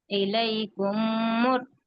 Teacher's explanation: ان دونوں میموں کو ملا کے ایک میم کی طرح پڑھ رہے ہیں، صرف تشدید کے میم کو پڑھ رہے ہیں، اسی لیے اس کو ادغام شفوی کہتے ہیں۔